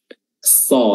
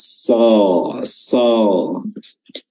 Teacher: tebalnya huruf so itu dibentuk dari terangkatnya lidah bagian belakang. So, jadi semua huruf tebal itu bukan karena bibirnya dimonyongkan, dibulatkan, namun karena diangkatnya lidah bagian belakang isti'la, so.